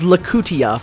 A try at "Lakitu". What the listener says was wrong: What? No, no, no. Lakutia? There's no A at the end.